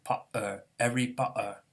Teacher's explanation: So the H gets strengthened to a glottal stop from a fricative, Harry, and this T gets weakened to a glottal stop from a T to become Potter, Harry Potter, in like kind of a Cockney accent